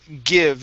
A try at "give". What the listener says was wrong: Okay, give me a V sound there at the end.